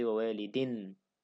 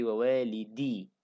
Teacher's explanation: So it becomes wawalidi, no tanween now, no in sound.